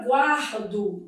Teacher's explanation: A palavra guardo dividido em sílaba, ó, eu tenho aqui um encontro consonantal imperfeito. O U é pronunciado, é uma semivogal e o A é vogal.